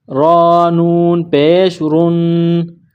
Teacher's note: یہاں را کے اوپر پیش ہے تو را کو موٹا پڑھیں گے۔ اس کے بعد نون ہے، نون کے اوپر تشدید ہے، نون مشدد ہے۔